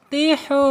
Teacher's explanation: Awas jangan tihu atau tikhu ya. Karena ha ini ada di tenggorokan tengah ya makhrajnya. Kemudian secara hukum ini karena ini yang menghadapi ha domahnya menghadapi wabu sukun yaitu mad asli atau mad thabi'i.